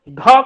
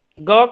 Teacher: देखिए घ कर देखिए आप लोग, घ कहेंगे तो जरूर ज्यादा हवा निकल रही है, ग कहेंगे कम निकल रही है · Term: महाप्राण